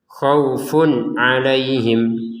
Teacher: Di sini ada tanwin bertemu ain. Kita baca dengan jelas.